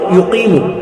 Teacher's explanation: یہ قاف حلق سے ادا ہوگا